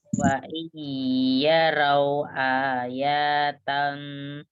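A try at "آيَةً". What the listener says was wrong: Ayatai. Hanya aja yang panjang, iyanya pendek.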